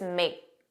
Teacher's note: you didn't hear that k, it was just make. And that makes the pronunciation smoother, which is why it sounds like we're talking very fast.